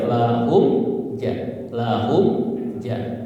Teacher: Mim sukun bertemu jim ya, bertemu jim. Gimana cara bacanya? Jelas di bibir, cukup nempel ya.